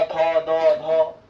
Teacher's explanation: अब आते दंत वर्ण, मतलब दांत का इस्तेमाल होता है। थोड़ा होठ, थोड़ा जो जीव है वो दांत को छेगा।